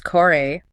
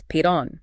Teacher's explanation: In the northern region, the siba, an R or L at the end of a syllable, often turns into an I sound, like a semi vowel